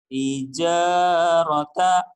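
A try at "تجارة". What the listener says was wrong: tijarata. Mas suara ke hidungnya. Tijarata. Tijarata. Tijarata.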